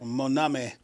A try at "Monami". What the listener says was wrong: You got to put the emphasis on it now. You can't just say that name just regular.